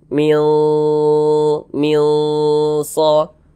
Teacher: Bunyi nunnya kita samarkan. Nah, kemudian kita dengungkan.